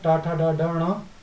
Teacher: टा ठा ड ढ ण, इनका उच्चारण स्थान मूर्धा है।